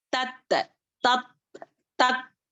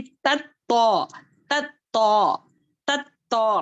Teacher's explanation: ता जो है बारीक है, तो जो है मोटा है